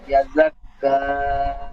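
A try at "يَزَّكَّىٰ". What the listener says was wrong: ইয়াজাক্কা নয়, ইয়াজাক্কা। ইয়াজ ইয়াটি যার সাথে যুক্ত হবে, যার জি, কা আরো বেশি করে টান দেন।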